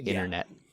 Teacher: almost always I drop the T in my pronunciation